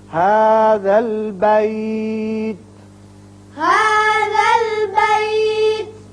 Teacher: یہاں تا ساکن ہو جائے گا، آیت ختم ہو رہی ہے